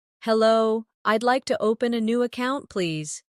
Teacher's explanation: Notice the stress on open and account, so the purpose is clear.